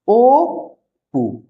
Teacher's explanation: প ধ্বনি আছে বলে আমাদের অ এর উচ্চারণটা ও হয়ে যাচ্ছে